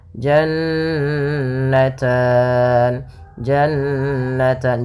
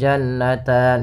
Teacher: Ada nun berharokat tasydid, maka ini kita namakan dengan gunnah. Bacaan gunnah, yaitu suara nunnya ditahan 2 harokat. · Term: gunah